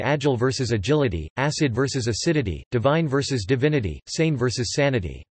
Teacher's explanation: When this suffix is added, the vowel pronunciations change largely owing to the movable stress